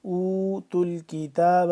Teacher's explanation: واو پیش تو نہیں پڑھیں گے، نہ ہی الف پڑھا جا رہا ہے نہ یہ والا الف، ٹھیک ہے، اس تا کو ڈائریکٹ مل